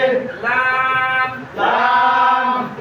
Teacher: জিহ্বার আগার কিনারা সামনের উপরের সামনের উপরের দাঁতের মাড়ির সঙ্গে লাগিয়ে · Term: 8 নাম্বার মাখরাজ